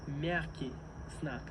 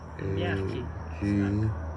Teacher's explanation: The accent of the first word in the name of this letter, мягкий, is the accent of the first syllable.